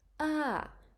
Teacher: the voice goes up and then back down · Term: falling tone